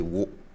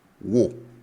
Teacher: And now the tone goes up